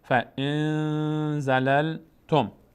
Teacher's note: اگر عزیزان دقت بکنن وقتی که میخواین تلفظ بکنید، اگر صداتون قطع شد، گیر کرد، اون موقع متوجه میشید که از بینی داره ادا میشه. اخفا، هم مقداری صدا در بینی مخفی میشه، هم روش توقف میشه مقداری